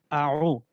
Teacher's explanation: عین کہاں سے ادا ہوتا ہے؟ وہ گلے کے درمیانی حصے سے. اب درمیانی حصہ یہ جو گلے کے آخر میں یہ جو ایک وہ سا بنا ہوا ہے، ٹھیک ہے نا، ایک کدائی سی بنی ہوئی ہے، اس سے جو ہے نا عین ادا ہوتا ہے.